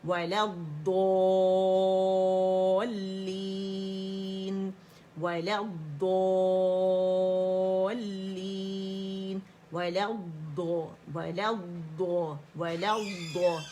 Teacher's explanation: پہلی ضاد بھی موٹی ہے, دوسری بھی جماؤ دیں گے